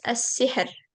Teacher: Haknya sukun. Kasrah, huruf sebelumnya lagi, sin. Jadi tipis.